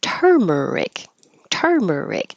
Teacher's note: This is an example of it ending in IC and the stress not being on the syllable before. It's not following that rule.